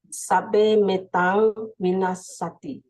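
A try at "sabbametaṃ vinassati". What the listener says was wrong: There is no sabbe here. There is no E. Sabba meta. Sabba meta. Normally what happens when we read, some of the Pali words which we are very familiar with come up. Sabbe satta bhavantu sukhita.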